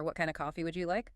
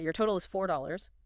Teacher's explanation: the intonation questions rising, statements falling